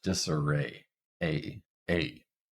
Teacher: we start at the front mid and then we move up very slightly